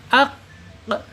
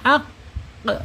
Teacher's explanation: Contoh di depannya huruf alif dan qafnya sukun, jadi ak gitu ya, ak tertahan dia ya, tertahan suaranya. Kemudian sifat yang lain ya, dia mempunyai sifat isti'la terangkat ya, terangkat lidahnya ak ya. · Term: asyidah